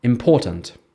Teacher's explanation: in the word important, the stress is on the second syllable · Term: word stress, Word stress